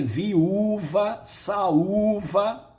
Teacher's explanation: O U está sozinho, ele forma hiato, está na sílaba tônica.